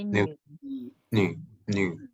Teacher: bunyinya i tapi mulutnya u